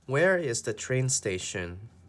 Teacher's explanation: so on station our voice goes down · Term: voice will go down